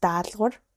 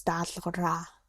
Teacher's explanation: So dal, kawar. But when you add the a suffix, now it's dalra. So the last a vowel is dropped.